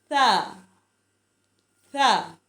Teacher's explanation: ज़ुबान की नोक ऊपर वाले दांतों के साथ टच करेगी तो नरमी से हम इसको पढ़ेंगे